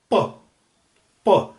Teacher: जैसे जब हम प बोलते हैं प, तो क्या होता है, हमारे दोनों होठ प, प, तो दोनों तो होठ मिलेंगे और अंदर हवा जो है वो हम रोक देंगे, फिर सडन एकदम से उसको प्लोसिव रिलीज कर देंगे, तो वो हो गया बाइलेबियल प्लोसिव।